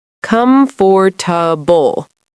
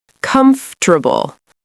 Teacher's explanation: in natural English, we usually say something closer to comfortable, where the middle syllable becomes softer and faster. Let's practice together in a teaching conversation.